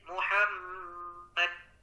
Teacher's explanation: nah ini tadi dia qolqolahnya agak ada tahanan sedikit Muhammad ada tahanan itu disebut qolqolah